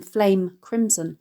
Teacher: the consonant nasal /m/ sound in “Flame-crimson”